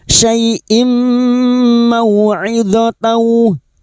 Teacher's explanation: Syai'im kasar tanin bertemu mim idgham bi gunnah, masuk pada huruf mim dan mendengung selama 3 harokat